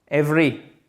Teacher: ce deuxième E, il ne se prononce même pas